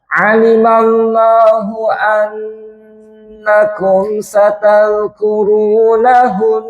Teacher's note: kalau panjenengan berhenti pada nun yang ditasdid seperti itu, maka tetap wajibul ghunah atau dengungnya berfungsi